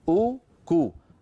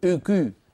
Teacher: يعني واو ضمة ليس معها ارتفاع لوسط اللسان. آباؤكو، اسمعوني جيدا، أوكو، وسط اللسان في وضع الراحة، اللسان لا يعمل.